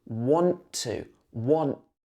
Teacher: In want to, we only say the second t, the t in to. We don't say want to.